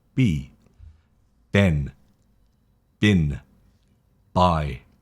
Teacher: B is more of a voiced throat. The throat vibrates a little bit more with B. You can feel it here, B.